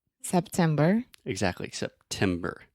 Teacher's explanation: I'm really aspirating, which means I'm breathing air out of my mouth and going making that pop sound. September, October, I'm thinking about the months of the years. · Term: true T